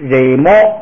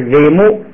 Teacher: 前边的那个音节呀是闭元音，后边这个▁o▁呢就变成乌